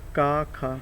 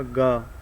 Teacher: अगर हम का और खा कहते हैं तो जो है हमारे गले में कोई कंपन नहीं होता। लेकिन अगर हम गा कहें, का खा गा, तो गा से ऐसा लगता है जैसे गले में कंपन हो रहा है। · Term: अघोष